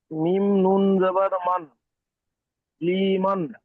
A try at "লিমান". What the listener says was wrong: লিমান, লি টান হবে না, লিমান।